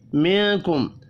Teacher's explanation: نون ساکن کے بعد حروف اخفا میں سے ایک حرف کاف آ رہا ہے، اخفا حقیقی ہوگا